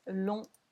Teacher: we don't say the G, we don't say PS